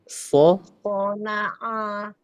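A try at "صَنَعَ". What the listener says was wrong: Perlu dilatih lagi. Ainnya itu tidak lari ke hidung. Salah satu cara berlatihnya bisa nanti dipanjang-panjangkan bacaannya ya, huruf ain, dan disamakan dengan bacaan hamzah.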